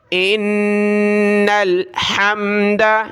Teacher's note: نون کو لام کے ساتھ غنہ کریں گے، ناک میں آواز پیدا کرنے کا نام غنہ ہے